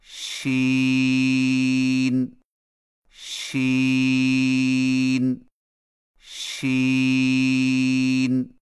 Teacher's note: شین کی ادائیگی میں زبان کے درمیان کو تالو کی طرف بلند کرتے ہوئے باریک اور پھیلتی ہوئی آواز میں پڑھیں